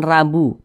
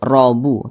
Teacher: Jadi setiap huruf ro memiliki tanda baca fathah atau memiliki tanda baca dhammah, maka huruf ro-nya itu dibaca tebal, dibaca tafkhim. Maka jangan dibaca taqrabuha, jangan rabu, tapi robu, tebal. Sehingga pangkal lidah kita itu keangkat ke atas, robuha, jangan rabu tapi robu, seperti itu.